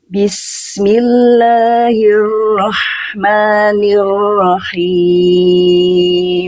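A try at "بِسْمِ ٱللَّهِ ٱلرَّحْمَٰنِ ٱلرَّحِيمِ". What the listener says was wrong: Oke, sekarang tinggal diperjelas getaran huruf ro-nya jangan sampai samar. Ya, jangan sampai Bismillahirrahmanirrahim. Huruf ro memang getarannya tidak boleh berlebihan. Tapi bukan berarti getarannya hilang, tetap getarannya jelas Bunda. Ya, Bismillahirrahmanirrahim.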